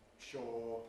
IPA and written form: ʃɔː (sure)